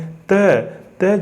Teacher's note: त जो है दंत है, वर्तस्य है और अल्प प्राण भी है और अघोष भी है